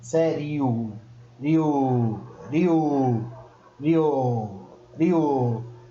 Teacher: Você vê que o I praticamente vai só mesmo acompanhando.